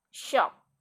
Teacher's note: Sh sound is palatoalveolar because the sound is located in blade of tongue and back of alveolar ridge. The sound include fricative because its sound produced by forcing air through a narrow channel made by placing two articulators close together.